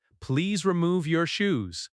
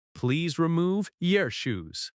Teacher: When spoken quickly, it might sound like, please remove yer shoes. But even when it is fast, the stress on move helps your ears catch the meaning